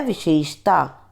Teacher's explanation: हम बोल देते हैं विशेषता, होता है विशेषता, यानी पहला जो शय होता है वो हमारा तालव्य होता है और दूसरा शय हमारा होता है मूर्धन्य